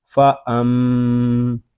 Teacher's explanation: میم شدد ہے، یہاں غنہ ہوگا، اس کو فا ام اس طرح نہیں پڑھیں گے، اس کو پڑھیں گے فا ام.